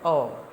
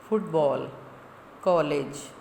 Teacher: इसको हम आगत भी कह सकते हैं कि आए हुए हैं जो कहाँ से, गृहीत स्वर या जिनको ग्रहण किया गया है दूसरी भाषाओं से। औ, ये ना तो आ है ना ओ है, दोनों के बीच का स्वर है औ, जैसे फुटबॉल, कॉलेज आदि।